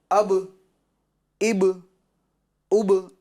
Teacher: کیوں کہ با حروف قلقلہ میں سے ہیں اور با ساکن ہے تو آواز میں کیا ہوگی؟ مخرج میں کیا ہوگی؟ جنبش ہوگی، حرکت ہوگی، آواز لوٹتی ہوئی محسوس ہوگی